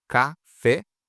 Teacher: A última é mais forte, então ela é oxítona